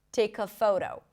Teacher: So here we see what happens when the k sound becomes the beginning of the next part.